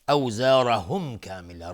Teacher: اوزارهم کامل، را استعلاست، میم ساکن بهش کاف اظهار شفوی